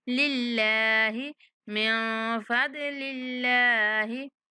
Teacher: اللہ کے لام کو باریک پڑھیں گے کیونکہ اللہ کے لام سے پہلے زیر آ رہی ہے